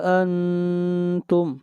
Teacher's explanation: انتم کے اوپر آواز ناک میں جائے گی، اخفا ہوگا